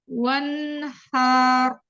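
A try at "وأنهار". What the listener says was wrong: Jangan dipanjangkan, hanya pendek. Wanhar.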